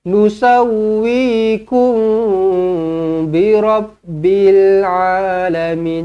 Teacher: Nusawwikum, wi 2 harakat ma asli, ku dengungkan 2 harakat. Mim kosong bertemu dengan ba, ikhfa syafawi, dengungkan 2 harakat.